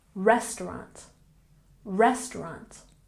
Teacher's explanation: restaurant has emphasis on the first syllable